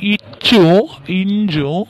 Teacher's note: இச்சும் இஞ்சும் இடை நா இடை அன்னத்தை பொருந்த பிறக்கும்.